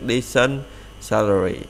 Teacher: Tính từ này là tính từ mình đọc là decent các bạn, đọc decent các bạn nha. Đó là tính từ hai âm tiết thì mình đọc nhấn âm trước, decent salary.